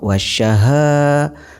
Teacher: mad tabi'i dibaca panjang 2 harokat. Contoh, wasyaha, ha ini dibaca panjang 2 harokat.